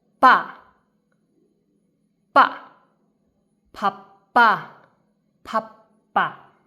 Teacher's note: it is originally ba but changed into pa because it's in the beginning of word